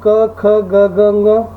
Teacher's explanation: ಕ ವರ್ಗದಲ್ಲಿರ್ತಕ್ಕಂಥ ಎಲ್ಲ ಅಕ್ಷರಗಳು ಕಂಠೆ ಅಕ್ಷರಗಳಾಗಿದ್ದಾವ